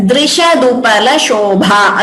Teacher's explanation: again this is dr, it is not dru.